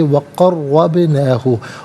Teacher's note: را پر زبر را کو پر کر کے پڑھیں گے